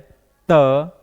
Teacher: त वर्ण का उच्चारण जो होता है वह दंत से होता है